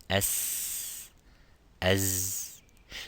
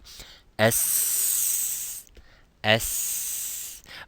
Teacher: Both of them are empty mouth. Both of them do not use the sides of the tongue to go up of the roof, but they use only the tip of the tongue at the lower incisive. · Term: Seen